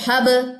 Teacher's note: حب یہ کلکلا اصغر ہے, درمیان میں رہا نا کلکلے والا لیٹر, تو یہ اصغر ہے چھوٹا کلکلا